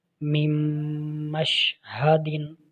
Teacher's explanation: نون ساکن کے بعد میم حرف یرملون ہے، اس میں ادغام ہو رہا ہے غنہ کے ساتھ۔